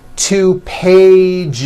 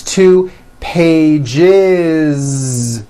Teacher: It's two pages with a voiced Z. Even though you spell the word like this, in American English, you pronounce the word like this.